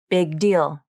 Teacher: Sometimes native speakers use a very small release when they pronounce the G in big.